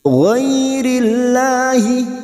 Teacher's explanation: lam jalalah yang sebelumnya harokat kasroh kita baca tarkik atau tipis.